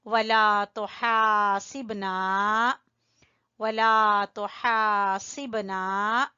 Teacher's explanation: बा के ऊपर हल्का सा कलकला